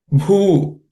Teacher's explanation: in this bhu is again aspirated, fourth letter in the per class of consonant